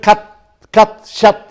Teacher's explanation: Then it is center. You can say below half open. Okay, below half open. It is short. It is unrounded